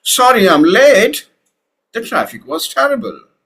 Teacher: So sorry I'm late in one chunk the traffic was terrible with another chunk and in between you have a natural pause